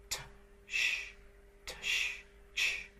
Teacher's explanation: There are only two of them, and you want to think of an affricate, in fact you can write that right here, as a stop plus a fricative. The sound begins with a stop and continues with a fricative.